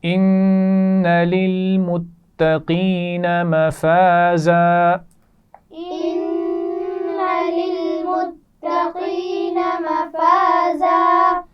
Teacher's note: مفازا پہلے الف مدہ ہے اور بعد میں وقف کرتے ہوئے الف مدہ کی آواز ہے